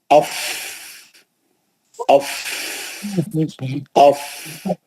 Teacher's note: باقی کے تو 2 دانت ہے اوپر کے، سامنے کے اوپر کے بڑے دانت، ثناء علیا، سامنے کے 2 بڑے دانت نیچے کے ہونٹ پہ بیٹھتے ہیں سختی سے، اور پیچھے سے ہوا خارج ہوتی ہے. وہ ہوا کے پریشر کا نام، وہ ہوا سے جو آواز نکلتی ہے اس سے وہ ہے فا کا مخرج.